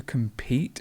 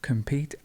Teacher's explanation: so that stress is at the end